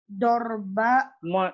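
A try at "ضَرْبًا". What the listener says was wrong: Dorban. Nah, ditanwin saja.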